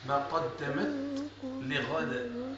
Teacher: لابد من ذاك الهمس باش ما تدغمش لك التاء في اللام